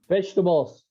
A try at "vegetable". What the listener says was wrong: There's no S. There's no S. But yes, it's vegetable. So it's only vegetable.